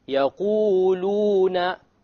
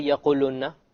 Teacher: If you didn't make the mad, you would not hear the letter of mad, the waw before the dhamma.